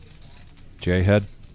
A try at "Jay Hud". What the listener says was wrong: Jay Hud. You've been calling him Jay Head.